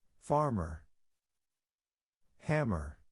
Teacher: So the ER at the end will be quick, flat, and lower in sound. They will be lower. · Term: ER sound